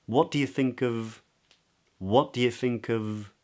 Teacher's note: here, of can be pronounced as a weak form, which means that it can be pronounced as a schwa. So not of with a V, but of.